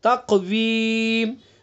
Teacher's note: काफ के अंदर कलकला भी होगा और पुर भी पढ़ेंगे, तक़वीम, और यहाँ पर हमने वफ़ किया है तो इसके अंदर भी मद्दे आरिज़ वक्फ़ी होगा।